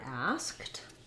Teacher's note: So in asked, what this has is we have an S and a K and a T sound all together